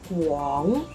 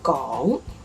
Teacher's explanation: the third group is guang with the W sound correctly pronounced. And if you drop the W sound, it becomes gong.